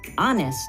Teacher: In this word, honest, we do not pronounce the H at the beginning.